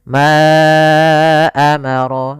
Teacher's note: Di sini ada mad jaiz munfasil, yaitu mad yang terjadi apabila ada huruf hamzah datang setelah huruf mad. Maka di sini panjang untuk ma adalah 4 harokat atau 5 harokat.